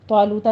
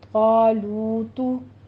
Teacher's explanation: آخر پہ ضمہ ہے، ہونٹ گول کیجیے گا ، طالوتا نہیں ہے، طالوتو۔ ایک بات کا دھیان رکھیے کہ